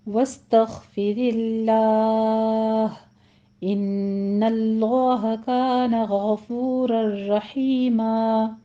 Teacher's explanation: غفور الرحیم میں غین بھی پر ہے، را بھی مفخم پڑھی جائے گی